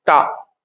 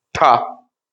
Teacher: जीभ ऊपर की ओर टकराई, फ्लिक कर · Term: मूर्धन्य